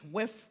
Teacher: F for theta, which is the voiceless TH